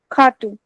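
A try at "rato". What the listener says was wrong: No, you're still saying K. I am saying H, but it is coming from the depth of my throat.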